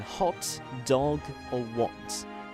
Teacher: Moving on to the O sounds, here is where the rounded vowels start being used in English. O is the low back rounded vowel, and in standard varieties of British English it's used as a short vowel only